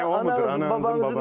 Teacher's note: bu kapalı nun Anadolu'da çok yaygındır biz kullanıyoruz